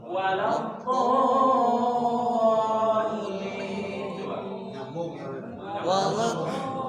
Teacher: Makhrajul huruf dha itu tidak ada nafas keluar.